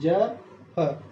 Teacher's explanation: इनके उच्चारण में हमारा जो जीभ है ना, सॉरी हमारे जो होठ है पूरे गोल हो जाएंगे और हवा जो निकलेगी पूरी रगड़ के साथ निकलेगी एकदम से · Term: आगत व्यंजन